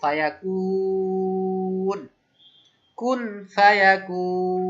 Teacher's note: লম্বা টান মাদ আরজি, ইচ্ছা মতো আমি 2 থেকে 4 আলিফ টানতে পারবো